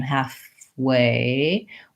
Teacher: When I say halfway, I fake, I use kind of a cheat where I'm not really closing my lip for the W. I'm making it from the F position, halfway, where I'm trying to keep that same closure and that glide of the way of the W.